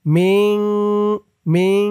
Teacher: ওয়ামা উনজিলা ইকফা গুন্নাহ উনজিলা মিং এখানেও ইকফা গুন্নাহ, নুন সাকিনের পরে ইকফার হরফ কফ আসছে।